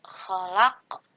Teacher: huruf qaf yang berharokat tapi disukunkan dan dipantulkan cara bacanya, disebut dengan qalqalah kubro.